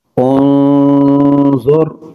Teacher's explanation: نون ساکن کے بعد ضا حروف اخفاء غنہ کر کے پڑھیں گے۔